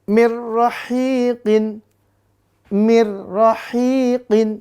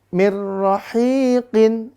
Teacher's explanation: Maka dia dibaca idgham bila guna tanpa dengung